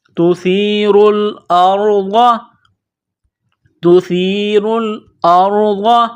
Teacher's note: ضاد زبر ضا، ضاد کو موٹا کرنا ہے